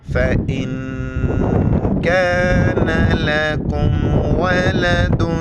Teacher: نون ساکن اخفا کریں گے، ناک میں آواز چھپائیں گے